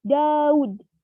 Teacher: ketika berada di posisi koda, bunyi deh akan berubah menjadi bunyi teh. Contohnya, Daud, yang dimana ud akan berubah menjadi ut, yang merupakan struktur kata tertutup.